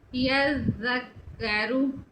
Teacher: زال کی سیٹی کی آواز نہیں آئے گی